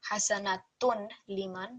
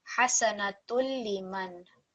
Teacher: the Dammatain here will be completely merged into the Lam Mushaddad, so you won't hear the Tanveen at all. There will be no Ghunna sound at all, no nasal sound. So this will be read as Hasanatul Liman. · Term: complete assimilation